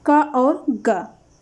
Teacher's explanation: ये अल्प प्राण है, का और गा अल्प प्राण है